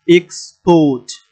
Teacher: তাহলে এক্সপোর্ট, ফোর্ট এখানে গিয়ে জোর হবে কারণ এটা ভার্ব সিলেবল